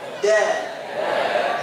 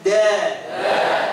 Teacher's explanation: D Nah orang sundah orang Arab itu bukan di tengah jadi ujung lidah bertemu dengan dengan gigi seri pangkal atas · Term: huruf Dal